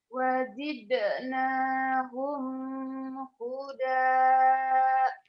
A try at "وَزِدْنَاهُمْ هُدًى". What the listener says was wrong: nahum ini kamu tandai. Ini mim mati ketemu ha idhar. humnya nggak boleh ditahan. Wazid nahum huda. Ini di sini idhar.